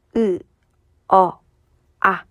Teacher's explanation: 입이 벌려지니까 혀의 높이는 내려가죠